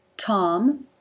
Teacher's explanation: You see the teeth closed, the tongue raised behind them, and there's the release.